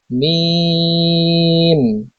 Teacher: দুই ঠোঁটের শুকনো জায়গা হইতে উচ্চারিত হয় মিম